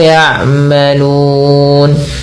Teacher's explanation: Kita boleh memanjangkan lu-nya sebelum mematikan nun dengan 2 harakat, 4 harakat atau 6 harakat.